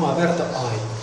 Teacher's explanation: Heroi, oi, é un O aberto, oi.